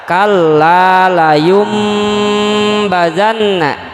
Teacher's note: bunyi suara nun mati atau tanwinnya beralih menjadi huruf mim khilaf di dalam ucapan atau dalam suaranya tidak ada dalam tulisannya